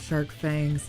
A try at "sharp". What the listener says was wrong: Shark fangs? His shark fangs? It sounded like you said shark.